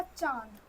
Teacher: चांद को बोलते समय हवा नाक से भी निकल रही है और मुख से भी निकल रही है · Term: चंद्रबिंदु, चंद्र बिंदु